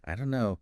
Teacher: the don't and know just merge · But we often hear it as, I don't know, the don't and no just merge